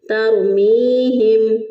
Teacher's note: ہا جو ہے اس کو اقصی حلق سے، یعنی گلے کا وہ حصہ جو کہ سینے کی طرف ہوتا ہے وہاں سے ہا ادا ہوگا